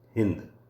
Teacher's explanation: आदि ई पर बलाघात होने के कारण हिंदू शब्द का अंत्य ऊ लुप्त हो गया, शब्द बन गया हिंद।